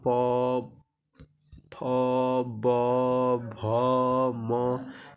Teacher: प, फ, ब, भ, म, ये सभी ओष्ठ से होते हैं।